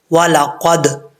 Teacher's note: जब यहां पर दाल साकिन है तो पढ़ते हुए दाल में कलक करेंगे · دال حروف قلقلہ میں سے ہے، جب یہاں پہ دال ساکن ہے تو پڑھتے ہوئے دال میں قلقلہ کریں گے۔